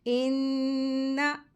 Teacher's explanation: इन्ना, यहाँ पे जो लफ्ज़ आया है इन्ना, नून मुशद्दद है, नून मुशद्दद को गुन्ना करके पढ़ते हैं, लेकिन ज़बर है इसके ऊपर, नून के ऊपर, तो इसको लंबा नहीं करेंगे, जल्दी पढ़ेंगे। इन्ना, ठीक है, झटका भी नहीं देंगे।